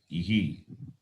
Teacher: In the case of the vowel E, the Visarga takes the sound of the letter E, becomes ihi, not iha.